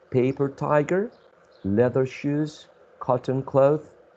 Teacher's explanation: some compound nouns are said to have double stress meaning that the stress is distributed equally in both elements